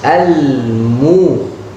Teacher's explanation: Ini al-mu, tapi dibaca al-mustaqim, mu. Mim dan waw keluar dari bibir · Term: huruf mim